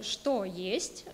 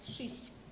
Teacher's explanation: So there is no о, no е sound, and the vowel is like ü.